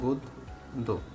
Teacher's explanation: এই জফলা থাকার কারণে দটা 2 বার উচ্চারিত হয়েছে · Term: দ্বিত্ব